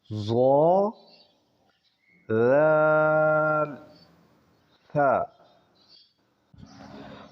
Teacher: زبان کی نوک جب اوپر کے اگلے دونوں دانتوں کی نوک کی طرف والے آدھے حصے سے لگے تو یہ الفاظ ادا ہوتے ہیں